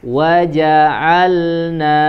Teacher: huruf lam dia termasuk al-jahr tidak mengeluarkan nafas ya tidak mengeluarkan udara yang mengalir yang keluar itu adalah hanya aliran suara yang mengalirnya suaranya